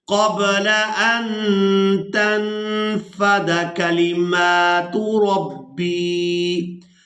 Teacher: قل لو کان البحر مدادا لکلماتی، مدادا لکلماتی ربی، را کو پورا ادا کریں گے، را پر زبر ہے، ربی لنفد البحر، لنفد البحر قبل ان تنفد، اب یہاں نون ساکن پر اخفا کریں گے اور اس کے بعد یہاں بھی نون ساکن پر اخفا کیا جائے گا، دونوں جگہ پر نون کی آواز کو ناک میں چھپا کر ادا کریں گے